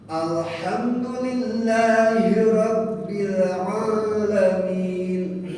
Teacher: Hamnya jangan didengungkan karena ini idhar safawi.